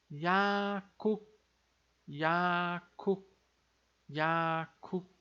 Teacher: Vai ficar com o som de K mais forte aqui por causa desse encontro aqui dos dois Ks.